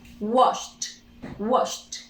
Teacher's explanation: Wash. Last sound, sh, voiceless. Simple past, ed. In pronunciation, only t.